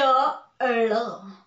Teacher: ळ म्हणताना जीभ रोल करून मागे जाते, वरती मधोमध टाळूला स्पर्श करते. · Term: मूर्धन्य वर्ण